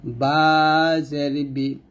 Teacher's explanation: বাটা আমরা দুই ঠোঁটের ভিজা অংশে মিল করে বাটা আমরা পাতলা উচ্চারণ করব